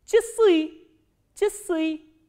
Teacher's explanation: And here you have to remember, just memorize it, that this a sound is pronounced as e, not as a.